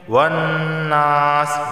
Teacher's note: نون پر تشدید ہے، غنہ ہوگا۔ اور نون الف زبرنا ایک الف کے برابر، اسے کھینچ کر بھی پڑھیں گے۔